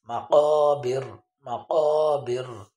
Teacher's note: মাকাবির জিহ্বার গোড়া তার বরাবর উপরে তালুর সাথে লাগবে।